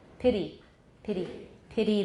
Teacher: The tongue makes a single tap. 就 是 舌 尖 点 一 下 齿 音， 一 次.